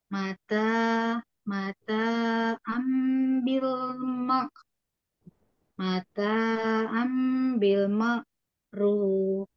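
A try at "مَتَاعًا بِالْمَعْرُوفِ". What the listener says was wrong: Ainnya lebih masuk. Mata ambil ma'ruf. Ya dilatih aja huruf-hurufnya masih apa ada yang belum pas mahrotnya gitu ya ya.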